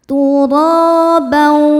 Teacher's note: Tur ro hukumnya mad thobi'i zohiri. Karena ada alif didahului harakat fathah. Cara bacanya dipanjangkan dua harakat.